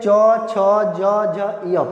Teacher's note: इसका उच्चारण स्थान तालु है, इसीलिए इन सब वर्णों को तालव्य वर्ण कहते हैं